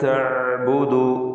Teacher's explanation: ഐൻ തൊണ്ടയുടെ മധ്യത്തിൽ നിന്നാണ് വരുന്നത്. തവസ്സുത്ത് അതിൻ്റെ സിഫത്താണ്. വ്യക്തമായി ഐൻ ഉച്ചരിക്കുക.